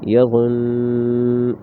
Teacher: وقف میں غنہ کر کے آواز ختم ہو جائے گی۔